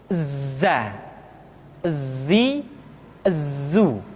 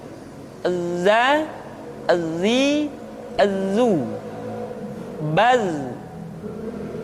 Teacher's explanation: Tetapi ingat, huruf za bersifat al-jahr. Artinya ketika kita mengucapkan huruf za, suara kita mengalir, akan tetapi nafas tidak boleh mengalir